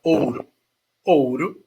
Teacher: a palavra ouro ouro eu tenho o u r o o o é uma vogal o u é uma semivogal certo e eles ficam na mesma sílaba